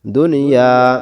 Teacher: বলেন দাল পেশ দু, দু পড়ব নুনের সাথে দুন, ইয়া আলিফ জবর ইয়া, দুনিয়া। এখানে এক আলিফ টান হবে, এক দাগ যেখানে এক আলিফ টানতে হবে সেখানে